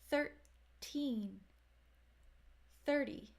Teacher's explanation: 1330 the beginning of these two numbers is the same third they both start with the voiceless th and they both have the R controlled vowel sound a curve the difference comes at the ending teen versus D